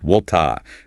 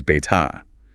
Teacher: The R just dissolves into a soft open vowel sound. · The tongue stays flat rather than curling backward. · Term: non-rhotic